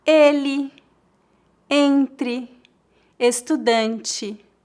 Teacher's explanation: Em final de palavras, a letra E é pronunciada como um I fraco